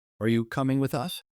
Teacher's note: Notice how your pitch rises on you and with us, then falls at the question mark.